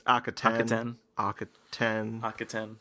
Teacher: I think the stress is on the last syllable.